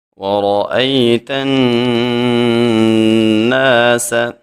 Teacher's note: ادغام کی وجہ سے نون مشدد ہے تو اس میں ہم غنہ کر کے پڑھیں گے، اور سین سیٹی والے حروف میں سے ہے، ہم اس میں خوب سیٹی پیدا کریں گے۔